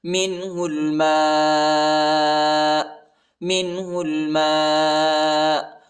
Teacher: ہا کو لام کے ساتھ ملائیں گے، الف نہیں پڑھا جاتا، میم کے بعد جو الف آیا ہے اس کے اوپر بڑا مد ہے، اس کو تقریباً 3-4 سیکنڈ تک کھینچیں گے